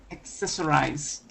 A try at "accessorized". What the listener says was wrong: Okay. Almost. Give me a D. Accessorized.